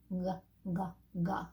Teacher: where the back of the tongue goes up instead of the front